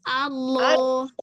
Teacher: Pangkal lidah naiknya dari awal. Allah. Jangan dibantu bibir.